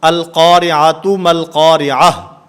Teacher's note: گول تا یہ بھی وقف کی حالت میں ہا سے بدل جاتی ہے